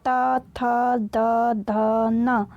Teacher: जो ता वर्ग होता है उसे दंत से बोला जाता है